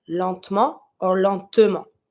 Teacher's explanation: Sometimes people tend to skip the E because there's no accent, so we say lentement, but you have to pronounce it a little bit.